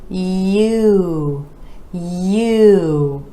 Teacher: For this vowel sound, we're gliding from the Y to U.